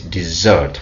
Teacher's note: It means when you pronounce on the first syllable, it's a noun. When we pronounce on the second syllable, it becomes a verb.